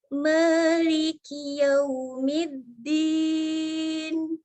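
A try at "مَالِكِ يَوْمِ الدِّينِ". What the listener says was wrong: Masih huruf D itu, kedengarannya D. Ya, sekali lagi ini ini gigi seri atas, ini gusi. Nah, itu masih din ya, din. Tapi Maliki Yaumiddin. Itu ingat huruf dal itu beda dengan huruf D ya, jadi jangan sama.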